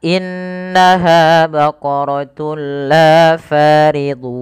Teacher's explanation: am Bil gunah yaitu dengan cara memasukkan tunnya kepada lam dan diganti bunyi suara nunnya menjadi suara lam